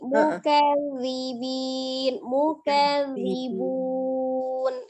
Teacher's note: Ya, zalnya tetap terbaca dengan tipis ya. Tetap istifal, huruf zal ujung lidah ada di ujung gigi seri atas, tetapi tidak ditebalkan